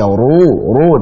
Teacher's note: ru ketika dhammah tebalkan